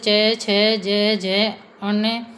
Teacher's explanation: ये हमारे तालु से उच्चारित वर्ण होते हैं। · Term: च वर्ग